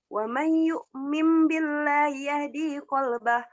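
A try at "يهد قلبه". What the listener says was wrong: Dinya pendekin. Wa may yu'min billahi yahdi qalbah. Yahdi qalbah. Dinya pendek. Yahdi qalbah.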